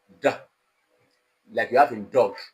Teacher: Now your tongue is touching the alveolar ridge, and that sound is called alveolar sound. That is voiced alveolar plosive.